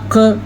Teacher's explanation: अब क़ाफ का मखरज हम डिफ़ाइन करें तो हम कहते हैं अक़, आवाज़ हमारी रुक गई और फिर जारी हुई, इस तरह जब हो तो उसे मखरज कहते हैं।